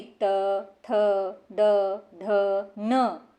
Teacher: इसमें बोले जाने वाले सभी वर्णों में जीभ दांतों को स्पर्श करती है। इसलिए इन्हें नंतव्य वर्ग भी कहते हैं। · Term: त वर्ग, दंतव्य वर्ग